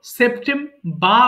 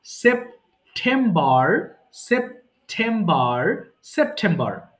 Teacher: British উচ্চারণ যারা করি আমরা তখন আর এর সাউন্ডের দরকার হয় না